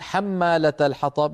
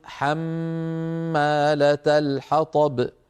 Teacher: نطول الميم نطول زمن الميم يطول غنه الميم كما قال الامام الجزري واظهر الغنه من نون